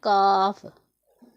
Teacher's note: काफ ज़बान की जड़ और तालु के सख्त हिस्सा से अदा होता है